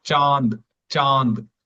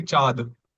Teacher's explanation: we are exhaling the air through the nose making it nasal. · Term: nasal sound